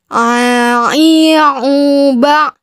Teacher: Tidak ada yang keluar suaranya dari rongga hidung, melainkan gunnah. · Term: huruf ain